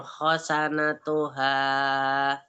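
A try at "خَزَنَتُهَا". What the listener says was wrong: khoza baru pakai zai. Khoza baru pakai zai.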